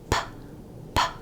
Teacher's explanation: is generated there's also no voice here it's just air is by having air pressure build up behind the lips and then get released in a burst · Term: stop sound